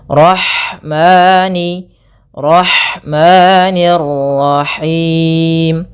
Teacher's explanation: Panjangnya dua harakat untuk lafal mani. · alirkan nafasnya pada lafal ha karena di sini ada hukum tajwid berupa ada sifat huruf ha yang itu sifat hamas, mengalirnya nafas. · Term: mad thab'i